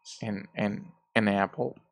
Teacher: So AN, we just pronounce this as schwa plus N. Well, sometimes we just pronounce the N sound, like an apple.